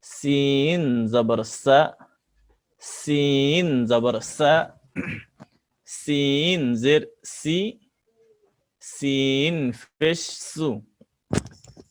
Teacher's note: সিন জিবার আগা সামনের নিচের দাঁতের আগা থেকে। সিন অক্ষর শীষ দিয়ে পড়তে হয়।